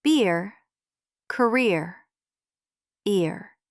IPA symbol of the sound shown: ɪr